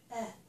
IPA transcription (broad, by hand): ɛ